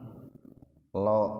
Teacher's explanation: Lam yang kedua dibaca tafhim, lo.